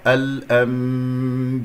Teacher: الأنبياء بكسرة الباء لا تختلس الكسرة